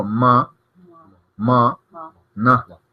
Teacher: Se siente un poquito la vibración en la nariz cuando uno las pronuncia. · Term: nasales